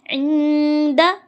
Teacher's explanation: نون ساکن کے بعد دال آ گیا حرف اخفا میں سے غنہ اخفا کریں گے یعنی نون ساکن کے بعد ناک میں چھپائیں گے